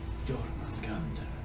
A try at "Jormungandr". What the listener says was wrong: Where you pronounce the J for some reason.